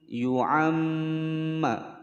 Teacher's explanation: mim bertasydid ditekan dan ditahan selama dua ketukan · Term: gunnah musyaddadah